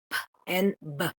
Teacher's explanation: you have the voiced and voiceless bilabial plosives, which would be the p and b.